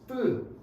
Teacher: 된 소리가 공기가 단단하게 나가는 건데 이건 공기를 응축시켰기 때문에 양이 적어